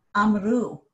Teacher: now my stress is on u. So because of the shifts in the stress, some vowels will change.